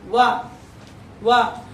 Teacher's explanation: ಇದಕ್ಕೆ ಹಲ್ಲು ಹೆಲ್ಪ್ ಮಾಡಬೇಕು ಮತ್ತೆ ತುಟಿನು ಹೆಲ್ಪ್ ಮಾಡಬೇಕು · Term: ದಂತೌಷ್ಟ್ಯ